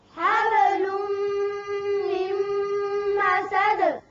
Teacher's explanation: یہاں نون ساکن کے بعد میم ہے، تو یہاں کون سا قاعدہ ہے؟ ادغام بغنا